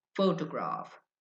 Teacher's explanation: The stress is on the first syllable.